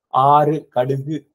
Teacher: ஆறு கடுகு இப்படின்னு சொல்லும்போது சுத்தமாவே குவியாது